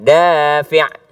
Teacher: yang panjang itu adalah bukan i-nya tapi da-nya